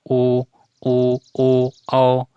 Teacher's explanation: तो वृत्ताकार जो होता है वृत्तमुखी होता स्वर होता है। उच्चारण करने पर ओष्ठों का आकार गोल हो जाता है